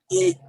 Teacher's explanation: বাংলা কিন্তু আমরা খুব নরম ভাবেই বলি, কিন্তু আমরা আরবি যে হামজাটা আছে হামজাটা একটু শক্ত ভাবে বলবো